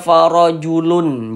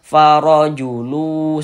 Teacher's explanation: bunyi tanwinnya dimasukkan ke huruf wau. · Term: idgham